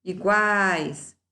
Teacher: Uma vogal tônica, tá? Oral. Não tem elemento nasalizador.